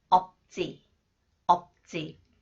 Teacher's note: When 지읒 follows the final consonants 비읍 시옷 that is pronounced 비읍 representative sound 지읒 is pronounced 쌍지읒